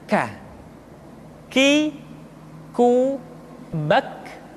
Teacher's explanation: Selanjutnya huruf K diucapkan dengan mengangkat pangkal lidah kita ke posisi di depan huruf Qaf. K diucapkan dengan mengalirkan nafas kita.